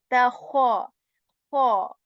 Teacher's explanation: in kha, there is going to be this scratching sound, this abrasion